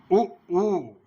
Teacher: ओष्ठ की आकृति के आधार पर तो वृत्ताकार होठ हो जाए, उ पूरा जो है होठों का वृत्त बन जाता है, उ ओ औ, इसमें भी वृत्ताकार हो जाता है।